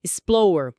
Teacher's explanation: São dois sons de r seguidos com uma vogal bem pequenininha, um chuá entre eles ou às vezes quase que se fundem, sabe?